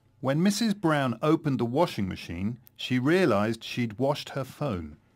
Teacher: the phrase she had washed is shortened to she'd washed.